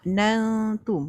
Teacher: Nun mati jumpa ta. Bunyinya tak jelas. Disembunyikan bunyi nun. Ifa hakiki.